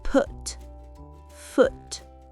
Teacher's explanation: Pour OU, gardez la bouche détendue. C'est un son court, plus relâché, avec les lèvres moins arrondies